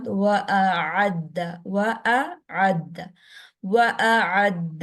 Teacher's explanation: حمزہ اور عین میں فرق رکھنا ہے. حمزہ کو جھٹکے کے ساتھ